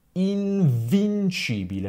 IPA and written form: invinˈʧibile (invincibile)